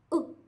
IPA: ʊ